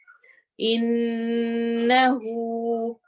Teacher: ان نون پہ غنہ کرنا ہے، لمبا کرنا ہے، ناک میں آواز آئے گی